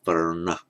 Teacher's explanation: If it's followed directly by r, let's look at the word varna, which means a color. Following the r, the n becomes retroflex varna. Where a n follows a r with a vowel in between, the same happens.